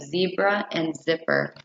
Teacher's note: this sound is a voiced fricative sound